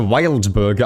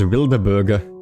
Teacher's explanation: I put like an vowel in between the D and the B